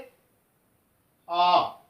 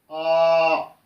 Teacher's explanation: जो जीभ का हिस्सा है वो तो अपनी जगह पड़ा हुआ है, लेकिन मुख विवर है जो पूरा का पूरा ओपन हो जाता है, खुल जाता है। तो इसको हम विवृत के अंदर जो है काउंट करें।